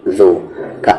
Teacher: ذال کا مخرج زبان کا کارنر اور سامنے والے 2 دانت کا کارنر